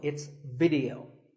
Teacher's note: The important thing is that both the I and the E are pronounced as short I sounds. It's not video, it's video.